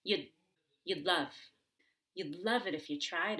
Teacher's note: You do have to make sure to get the held D in front of love. So you have to squeeze your throat and hold your breath.